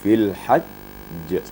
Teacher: Maka ditasydidkan dulu, baru digetarkan huruf qalqalanya. Fil hajj. Ada jedahnya sedikit.